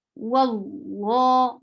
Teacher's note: Allah subhanahu wa ta'ala's names, whenever it gets fatha before it, it is heavy.